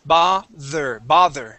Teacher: This is going to have a voiced TH